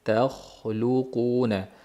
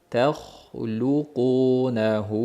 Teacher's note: Xo yo'g'on, undan keyin lam ingichka, undan keyin qof yo'g'on. Ikkita yo'g'onning orasidagi lam luqunahu bo'lib, lo bo'lib qolish ehtimoli bor.